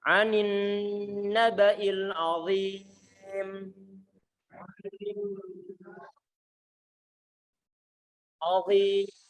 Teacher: Antum tempel begini, taruh di bawahnya ujung di bawahnya gigi seri bagian A atas. Keluarkan sedikit dan antum tebalkan suara huruf dha-nya.